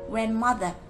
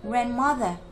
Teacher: Nhớ xuống giọng các em nhé